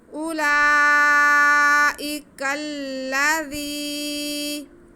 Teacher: زال کو ہم نرمی سے پڑھتے ہوئے تھوڑا کھینچیں گے، کیونکہ یہ ہمارے پاس یا مدہ ہے، ایک الف کے برابر ہم اسے کھینچیں گے۔